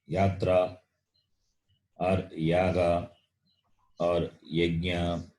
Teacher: its ucharanam is palatal. Its sound is palatal. The tongue touches the palate.